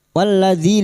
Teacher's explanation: lam takrif yang bertemu dal idgham syamsiyah